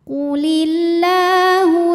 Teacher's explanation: Mad Thobi'i muqaddar karena ada huruf lam berbaris fathah panjang cara bacanya panjang dua harakat · ada Ya Sukun didahului baris kasrah maka huruf ta panjang dua harakat